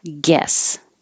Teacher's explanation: we are used to seeing GU, but not pronouncing the U or making any lip rounding